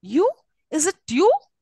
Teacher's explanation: the third syllable is more prominent than the other two and carries a rising tone